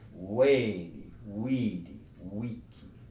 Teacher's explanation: The letter V is pronounced as if it were a W.